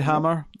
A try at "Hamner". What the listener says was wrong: You just said hammer. Hamner.